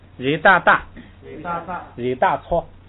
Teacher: 既不送气也读4声，所以呢是大，直接往下读